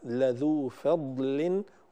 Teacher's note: الضاد لا قلقلة فيها إنما هي ضاد فيها صفة الاستطالة في قوله تعالى لذو فضل، وفي قوله تعالى أضعافا، فلا قلقلة في الضاد أبدا.